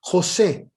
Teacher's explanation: es una palabra cuya sílaba tónica es la última